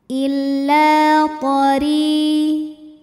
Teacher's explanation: ra dibaca dengan tipis, tanpa perlu mengangkat pangkal lidah kita ya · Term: tarqiq